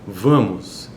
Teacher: veja que é uma espécie de U ali não é e Esse a é um é um a nasal ele não é um a oral